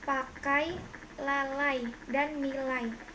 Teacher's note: Diftong naik menutup maju